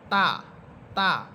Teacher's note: জিহ্বার আগা সামনের উপরে দুই দাঁতের গোড়ার সাথে লাগবে।